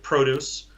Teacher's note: If the stress is kind of at the end of the word, it's more often being used as a verb